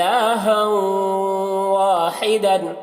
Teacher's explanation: ناقص طور پر یہاں پر ادغام ہو رہا ہے غنہ کے ساتھ میں